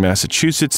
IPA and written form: ˌmæsəˈʧusəts (Massachusetts)